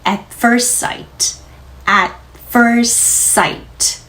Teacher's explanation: 아 여신 다음 at티 소리는 터트리지 말고요. 위치만 갖다 놓을게요.